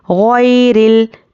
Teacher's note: الف کو نہیں پڑھیں گے، لام سے ملا کر پڑھیں گے